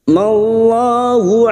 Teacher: lam jalala yang sebelumnya fathah kita baca tafkim